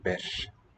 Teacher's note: Written R-I. The I is devoiced, and that R is devoiced there too.